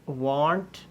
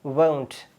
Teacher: It is not want, it is won't with a diphthong. There is a glide like a wave here, won't.